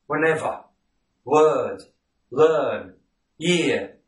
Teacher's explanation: So in words like whenever, word, learn, year, and a host of other words, you simply omit the R sound